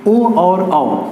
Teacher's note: ओ और औ कहाँ से बोले जाते हैं, कंठ और ओष्ठ दोनों से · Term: कंठोष्ठ